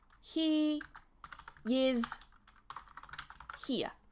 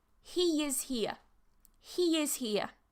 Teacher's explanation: a vowel sound, next word starts in another vowel sound, and we're going to link them together with a y sound in the middle.